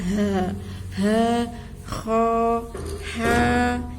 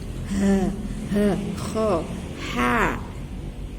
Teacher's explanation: Nah, karena disebut huruf halqi itu karena keluarnya dari tenggorokan.